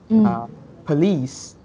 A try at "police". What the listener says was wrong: Chính xác.